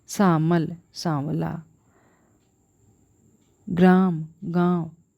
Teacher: म के सुरक्षित रहने पर भी म का व में परिवर्तन का पाया जाना इसका विशिष्ट लक्षण है।